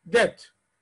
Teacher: بص الكلمه اللي جايه دي وبص نطقها وهنعيدها، هي مكتوبة عند حضراتكم D-E-B-T تنطق debt. البي ما تطلعهاش في بقك